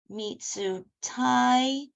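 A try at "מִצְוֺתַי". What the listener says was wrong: Mitzvotai, there's where the vav is vav, okay, because the tzadi has a vowel, dancing partners, and mem has a vowel, the tzadi has a vowel, the vav is a letter here.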